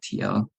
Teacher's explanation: to get through that sound get the TL and and it it is kind of like a t plosive sound happening at the same time that you're having that kind of l sound together that l sound your tongue is in the position of an